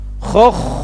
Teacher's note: otomatis tebal karena kha sukun datang setelah dhammah